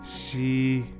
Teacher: this sounds a little bit like the she in sheep however a little bit softer and the tip of the tongue touches the lower front teeth